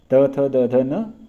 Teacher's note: तवर्ग है त थ द ध न लकार तथा सकार इन सभी का उच्चारण स्थान दंत स्थानीय माना गया है